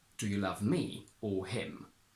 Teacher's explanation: Here I need to overemphasize me and him to create opposition, because here I am not asking you if you love me, so I'm not asking you if you do the action of loving, I'm asking you who you do the action of loving to.